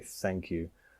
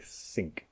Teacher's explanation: the TH you don't use your voice, you just use air to aspirate and say think.